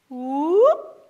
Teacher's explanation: The P, you have to hold it.